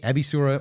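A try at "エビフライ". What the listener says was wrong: It's an F, Ebifura.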